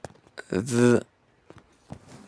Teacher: The sound the it is a voiced dental frictive consonant. It is pronounced by placing the tip of your tongue between your teeth and vibrating your vocal cords while forcing air out with friction.